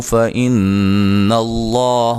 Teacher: لفظ اللہ کو موٹا ادا کریں گے، اس سے پہلے زبر ہے